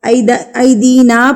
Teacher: مد منفصل یعنی کہ چھوٹی مد، اس کو ہم نے 3 حرکات کے برابر کھینچ کے پڑھنا ہے